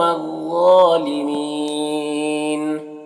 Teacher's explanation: یہ دل قوم قاف کو پر پڑھیں گے، واولین سے نرم آواز کے ساتھ جلد پڑھیں گے۔ ظالمین کو پر پڑھیں گے، حروف مستعلیہ میں سے، کھڑا زبر 1 الف کے برابر کھینچیں گے، اور یہاں پر وقف کی صورت میں مد لین مد عارض وقفی ہوگا، تو اس طرح سے پڑھیں گے۔